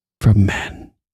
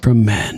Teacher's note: It's like she's breathy with it. Like, from men. It kind of catches in her throat.